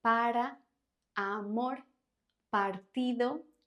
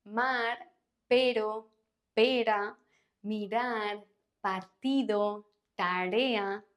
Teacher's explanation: This R is pronounced with a single tap in the area behind your upper teeth, as in like para, amor, partido. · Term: soft R